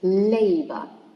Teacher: stress in the first syllable because it's a noun that contains two syllables so it should it should be stressed on the first one